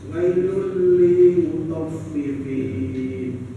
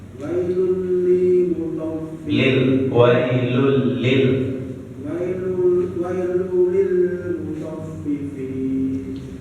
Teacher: kembali ditekankan di tasdidnya ya Pak. Tasdid di huruf lam dan huruf fa.